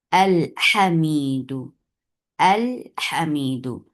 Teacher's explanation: آپ ہا کو دیکھیں گے تو آپ اس کو لام کو اظہار کر کے پڑھیں گے